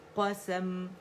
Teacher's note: سین باریک, قسم کر کے سین کو موٹا نہیں کریں گے